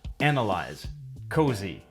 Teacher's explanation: the S is voiced in other words it makes a z sound